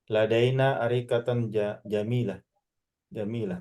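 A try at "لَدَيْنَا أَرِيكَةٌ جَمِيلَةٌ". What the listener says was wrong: Ladaina arikatun jamilatun. Ya harus jelas ya. Un harga juga harus un setelahnya gitu karena dia sifat ya sifat dan sifat itu ya bagus.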